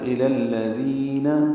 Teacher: ذال نرمی سے ادا کریں گے اور دو حرکات لمبا کریں گے